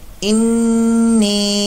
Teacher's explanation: نون مشدد کا یہاں پر غنہ ہوگا اور اس کو لمبا بھی ہم کریں گے